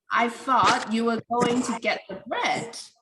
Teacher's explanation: the bread has already been mentioned, so it's old information. And you pronounce it with the rising tone. However, the word you get the falling tone because it's the new information in the sentence.